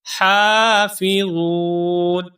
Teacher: اب حافظون میں باریک ہا ہے، حلق سے آواز آئے گی اور ہا کے اوپر ہے کھڑی زبر، تو اس ہا کو ہم ایک الف کے برابر لمبا کریں گے